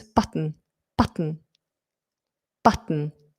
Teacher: So what I'm doing there is I'm holding, like in a lateral plosive, I'm holding the tip of the tongue up and I'm not releasing the T.